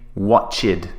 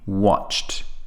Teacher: it's one syllable there's no extra syllable added